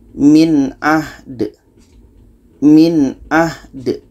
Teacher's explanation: Da mati ini qalqalah, ada pantulan.